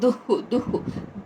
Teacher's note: సమదుఃఖ సమదుః దుః అక్కడ విసర్గ ఉచ్చారణ దుః దుః గాలి వదులుతూ హ అని పలకాలన్నమాట